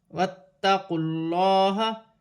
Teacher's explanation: واتقوا اللہ، تا مشدد ہے، جماؤں کے ساتھ ادا کیا جائے گا، اللہ کی لام سے پہلے پیش آ رہی ہے، اللہ کی لام موٹی پڑی جائے گی